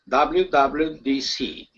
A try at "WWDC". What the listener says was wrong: Much better.